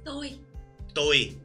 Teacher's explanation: the most polite way to say me or I would be toi toi which is a flat tone